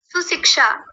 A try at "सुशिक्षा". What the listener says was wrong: सुशिक्षा, गलत बोला है, ध्यान रखिए, इसमें तीनों आ गए। देखिए दंत्य सकार, तालव्य शकार और यहाँ मूर्धन्य शकार छिपा हुआ है, और आपने गलत कर दिए।